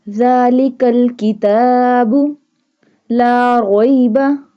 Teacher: here is the standing fatha on ta, so little bit of stretch it. We stretch it as long as 1 alif.